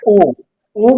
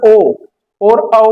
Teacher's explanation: ऊ बोल लोगे तो आपके होठ गोल हो रहे हो। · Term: व्रतमुखी स्वर